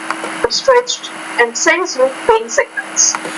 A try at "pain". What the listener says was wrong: Now the word pain, you want to pronounce that with a little more air. Pain, pain signals.